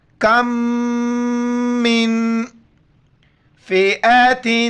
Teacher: میم کے ساتھ ملائیں گے، ناک میں آواز چھپائیں گے، پھر میم کو نون کے ساتھ ملائیں گے، ناک میں آواز چھپائیں گے، اخفا کریں گے.